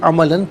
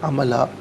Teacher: دو زبر کی تنوین وقف میں الف سے چینج ہو جاتی ہے